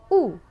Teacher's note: u is a high back rounded vowel